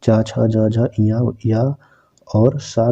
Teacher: तो चा वर्ग ध्वनियाँ जो है तालु में आती हैं। तालु और जीभ के स्पर्श से बोले जाने वाले तालव्य कहलाते हैं।